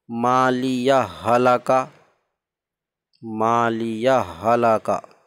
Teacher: تو دونوں ایک ہی حرف ہیں۔ تو یہ مالیہ ہلاکا میں ہا کا ہا میں ادغام، ادغام مثلین ہے۔